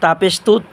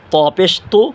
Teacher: তা পেশ তু চিকন আওয়াজে ত পেশ তু মোটা আওয়াজে